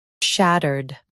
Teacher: In U.S., stress shat and keep erd soft. In UK, ud is lighter.